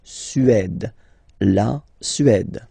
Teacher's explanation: Remember, accent grave, it's really open.